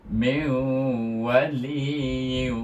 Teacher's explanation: Meu dengungnya pada wau eh. Nun dihazafkan tapi masih dengung. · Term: Idgham maal ghunna